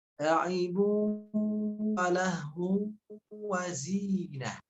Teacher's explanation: Di sana wawunya ditahan 3 harokat ya, masing-masing 3 harokat.